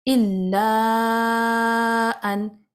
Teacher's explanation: مد الف کے بعد اگلے ورڈ میں حمزہ آ رہا ہے، لہٰذا الا اب جو مد ہے وہ 4 کاؤنٹ سٹریچ ہوگی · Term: مد منفصل